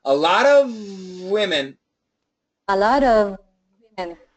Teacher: make the V really long a lot of women a lot of women not long enough